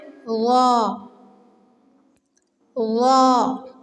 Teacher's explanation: ثا ذال غا، یہ تینوں ایک ہی جگہ سے ادا ہوتے ہیں، لیکن غا کو موٹا پڑھنا ہے